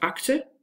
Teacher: You have incomplete plosion, so the k does not really have this plosive